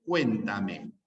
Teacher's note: en la palabra cuéntame hay una sílaba tónica, cuen, lo voy a poner con mayúscula, cuen, y las demás son átonas, ¿no?